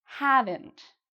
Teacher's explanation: So again, we have that ent sound at the end. And have is said louder and longer